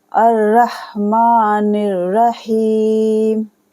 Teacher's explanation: हा या ज़ेर ही को खींचेंगे हम, मीम साकिन कर देंगे